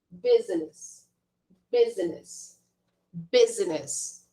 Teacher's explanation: apesar da gente ter a letra U, a gente vai falar com o som de I também